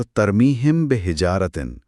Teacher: उसूल यह है कि जब मीम साकिन के बाद हर्फ बे आए तो मीम की आवाज को मुकम्मल तौर पर जाहिर नहीं किया जाता बल्कि उसे हल्का सा छुपाया जाता है और गुन्ना के साथ अदा किया जाता है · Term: इखफाए शफवी